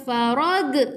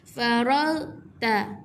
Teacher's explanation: Jadi kita tak perlu bunyikan g kat belakang.